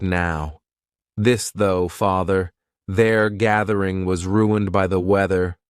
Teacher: Voiced means your vocal cords are going to vibrate. So, you're going to put your tongue in between your teeth and your vocal cords are going to vibrate when you aspirate the sound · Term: voiced th